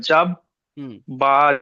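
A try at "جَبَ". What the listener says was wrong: জাবা টান দেবো না টান দিলে ভুল হবে কারণ বা উপরে জবার এসছে এটা হারাগাতে পড়া হারাকাতে পড়া টান দেওয়া নিষেধ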